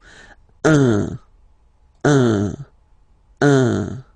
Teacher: So if you listen to me, you don't hear any N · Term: the nasal